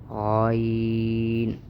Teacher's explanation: جہاں پر عین نکالا جاتا ہے اس سے تھوڑا سا اوپر غین ادا ہوتا ہے